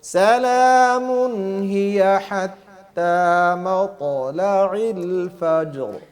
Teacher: تو کو موٹا کرنا ہے، میم کو باریک ہی پڑھنا ہے. مطلع العین جو ہے اس کی آواز صحیح نکلے، حمزہ کی طرح نہ ہو